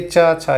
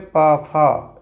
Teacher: दूसरा वर्ण महाप्राण तो होता है लेकिन सघोष नहीं होता